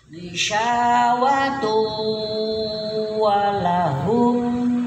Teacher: Tanwin menghadapi wawu. Idgham bi gunnah ya, dibacanya didengungkan karena udah namanya juga bi gunnah, dengan didengungkan. Idgham bi gunnah ya, idghamnya itu artinya idgham tadi memasukkan nun mati kepada wawu ya. · Jadi idghamnya tun, nun matinya dimasukkan ke wawu, kemudian didengungkan bi gunnah ya.